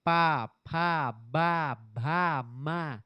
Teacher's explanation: ओठ से निकलता है। ओष्ठ व्यंजन है ये।